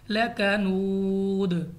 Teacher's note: دال ہمارے پاس قلقلہ کی صورت میں واضح ادا ہوگا